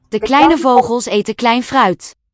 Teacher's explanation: note that the V is a voiced fricative.